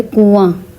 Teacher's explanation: کنواں میں بھی ہم نون کی آواز کو چھپاتے ہیں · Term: اخفا